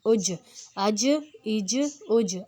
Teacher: اب یہ قلقلہ والا لفظ ہے، اس میں ہم نے قلقلہ لانا ہے، مطلب زبان کو ہلانا ہے جیم میں